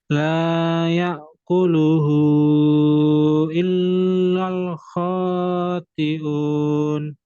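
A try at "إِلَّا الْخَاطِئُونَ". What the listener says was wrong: Coba kalau lam tuh ya, lam bertasydid, lam nun mati ketemu lam. Jangan terlalu lama. Illal. Jangan illal.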